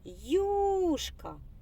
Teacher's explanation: так наголос падає на перший склад